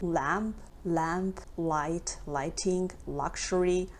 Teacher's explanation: light L or regular L, which is pronounced with the tip of our tongue, like L. So light L or regular L is usually at the beginning of a word, like lamp, light, lighting, luxury.